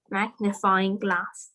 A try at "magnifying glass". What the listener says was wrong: I like the way you pronounce the word magnifying glass. That's the way.